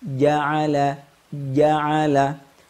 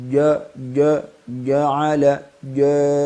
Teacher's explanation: terbuka tersenyum ini adalah indikasi huruf Jim memiliki sifat alistifad atarqi pangkal lidah tidak naik ke atas Yaa tetap di bawah